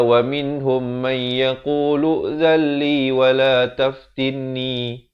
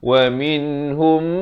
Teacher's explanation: Idgham mislan saghir, nama hukumnya. Mim bertemu mim kena dengung 2 harakat. Jangan kita tak dengungkan.